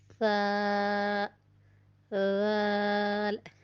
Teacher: زبان کی نوک سامنے کے 2 دانتوں کے کنارے یا سرے سے لگے تو فا، رال ادا ہوتے ہیں، اور یہ دونوں نرمی والے حروف ہیں